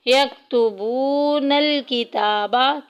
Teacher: किताबा में देखें ताकि ऊपर खड़ी ज़बर आ गई, एक अलिफ के बराबर लंबा करेंगे।